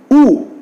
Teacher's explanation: Cardinal vowel number 8 U is back close rounded vowel.